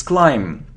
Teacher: so we don't pronounce B